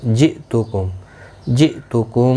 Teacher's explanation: اور میم ساکن کے بعد واو آیا ہے، اظہار شفوی ہوگا، گنہ نہیں ہوگا. جئتکم، حمزہ ساکن کو جھٹکے کے ساتھ ادا کیا جائے گا